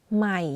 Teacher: One similarity of this tone to the middle tone is the voice is constant, but for low tone, you add a slight falling low pitch. · You can hear that my voice goes in a lower pitch when pronouncing the word.